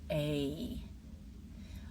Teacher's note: Your mouth starts in a similar position. But as you finish the sound, your tongue rises and your jaw begins to close slightly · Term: long A